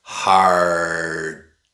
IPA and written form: harʔ (hard)